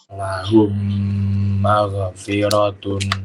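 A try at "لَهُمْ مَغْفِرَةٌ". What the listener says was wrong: Catatannya di ghain jangan sampai mantul ya, karena bukan huruf qalqalah.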